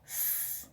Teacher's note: the vocal cords are spread apart and the air passes between them unimpeded. Sounds produced in this way are voiceless. This can be felt physically if you put your fingertip on the top of your Adam's apple, then produce sounds such as s, and there should be no vibration.